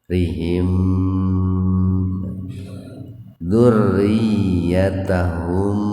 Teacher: Mim sukun bertemu dengan da secara terpisah. Jadi dibaca jelas itu di bibir. M-nya itu mimnya dibaca jelas. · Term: idhar safawi